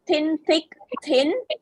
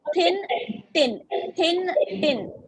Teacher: when you say thin your tongue is touching the upper teeth that is the incisors